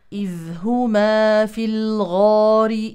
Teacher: ولا يصح ان نضم الشفتين مع الغين لانها ليست مضمومه هي مفتوحه ويليها الف